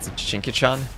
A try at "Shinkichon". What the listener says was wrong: Shinkichon. Like a long O, like ocean, but otherwise, yeah. Shinkichon.